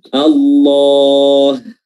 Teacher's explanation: Oke, haknya tipis ya. Yang tebal di sini hanya huruf lam dan mad dari huruf lam tersebut yang tebal. Adapun huruf haknya kembali tipis.